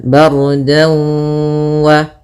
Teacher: kemudian kita tahan dulu gunnahnya 2 harakat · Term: idgham bi gunnah